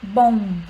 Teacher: Aqui a gente tem um som nasal, né, que seria dado pelo O e o M